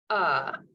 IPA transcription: ʌ